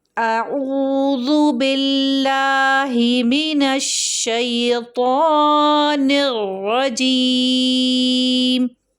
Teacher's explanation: حروف مدہ کی حرکت 2 سے ذرا زیادہ ہو جاتی ہے، تقریباً 4 تک، 2 4 6 ہوتی ہے لیکن تقریباً 4 تک ضرور پڑھیں۔